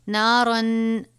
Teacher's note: تنوین کے بعد حروف اخفا میں سے فا آیا ہے، غنہ کریں گے